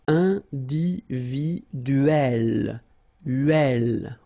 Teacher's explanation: So remember when you get this e and then double consonant, and especially here it's the same one, that's the idea. It will open the sound of e, so you will pronounce it like é.